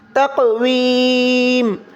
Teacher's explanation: وقف کی صورت میں ہم صرف میم کو سکون کے ساتھ ادا کر دیں گے